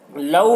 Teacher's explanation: لو میں واو، یہ واو لین ہے، اسے بھی جلد پڑھنا ہے